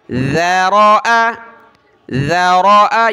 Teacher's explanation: ذال پر زبان نکالیں، ذال زبر ذا، را کو موٹا کیا، را زبر را، حمزہ زبر آ.